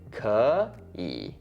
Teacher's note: when you actually have 2 third tones together, the first one ends up sounding like a second tone. So actually it would sound like 可以.